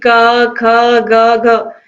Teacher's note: क आप बोलोगे तो पीछे आपको आ की साउंड सुनाई देगी या आ की ध्वनि सुनाई देगी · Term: व्यंजन